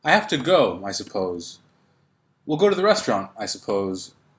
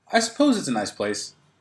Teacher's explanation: in each case my tone is falling not rising the falling tone is important so the falling tone means that